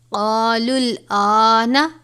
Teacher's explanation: حمزہ کے اوپر کھڑا زبر ہے یہ 1 الف کے برابر ہی پڑھا جائے گا